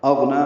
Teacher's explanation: حمزہ اقصی حلق سے ادا ہوگا، واضح طور پر ادا کریں گے، غین سے ملائیں گے، غین ساکن ہے، اس پہ اظہار ہے، نون کو 2 حرکات لمبا کرنا ہے، کھڑا زبر ہے، یعنی پڑھنا۔